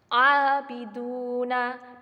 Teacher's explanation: 2 ketukan karena di situ adalah mad tabi'i